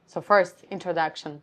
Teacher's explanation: Some people say that oh my voice is sounds very high or my voice is very low and at times it is their natural position and natural sound but very often because of the stress our larynx is being pulled up and so the sound is also different it's being uh more nasal